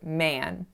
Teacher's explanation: The next word that I mispronounced was the word man. Typically, I say this word with an a that has some nasality on it from that n, but in the text, I said men, as in the plural of a man.